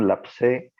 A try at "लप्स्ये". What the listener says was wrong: लप्स्ये, से बोलिए, स्पष्ट करिए, लप्स्ये। आपका लप से सुनाई दे रहा है, लप से ऐसे सुनाई दे रहा है, लप से ये सुनाई दे रहा है।